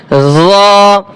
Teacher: র হরফ মোটা হবে, 1 আলিফ টান হবে